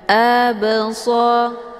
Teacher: huruf ba-nya dipantulkan dengan pantulan ringan. Absa, keluar bunyi b. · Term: qalqalah sughra